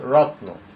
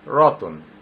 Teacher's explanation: রত্ন ভেঙে লেখা আছে রতন, অর্থাৎ যুক্ত বর্ণ একটা সংযুক্ত ব্যঞ্জন বর্ণ আছে। যুক্ত ব্যঞ্জন বর্ণের মাঝখানে একটা অ চলে আসছে। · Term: মধ্য স্বরাগম